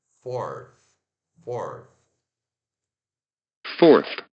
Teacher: Se pronuncia F-O-R, o TH desvozeado, O-R, fourth, fourth.